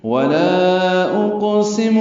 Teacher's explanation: نہیں میں قسم کھاتا ہوں قیامت کے دن کی، ولا اقسم بالنفس اللوامہ، ولا اقسم، لا پہ مد منفصل، قاف ساکن پہ قلقلہ، سین بھی معروف طریقے سے جلدی پڑھیں گے۔